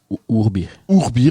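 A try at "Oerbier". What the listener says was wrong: Non, en néerlandais, E se prononce OU.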